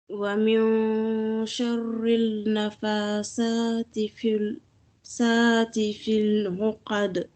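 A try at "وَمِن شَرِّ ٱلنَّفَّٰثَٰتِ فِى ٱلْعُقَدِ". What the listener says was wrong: Alors, donc, normalement, moi, j'entends un L ici. Wa min sharril nafasati. Donc, il n'y a pas de L, on n'entend pas le L. Après le Ra, on attaque le Nun directement. Wa min sharrin, rin, tu vois?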